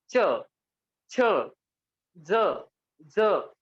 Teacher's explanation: पण जर बघितलं गेलं च, ज्यावेळेस तुम्ही च चं उच्चारण कराल, च का जब हम उच्चार करते तो हमारी जीभ का जो बीच वाला हिस्सा आहे, आपला जो मधला भाग आहे तो टाळूला स्पर्श होतो, त्याचं जे टोक आहे ते टोक स्पर्श होत नाही। · ज्यावेळेस तुम्ही उच्चारण कराल त्यावेळेस तुम्हाला कळेल की जिभेचं टोक स्पर्श होत नाही, त्याचा जो मागचा भाग आहे, मधला जो भाग आहे तो आपल्या टाळूला स्पर्श होत असतो।